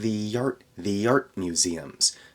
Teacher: we have the Y sound at the end of the in order to get ready for the a in art then we have art museums I'm not saying a t there